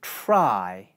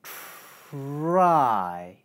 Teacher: As you can hear, the aspiration from the /t/ consonant carries over into the /r/ consonant.